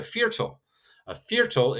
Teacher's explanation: And so you hear again that V is more of an F. So it's a fearal, a hard attack on that V.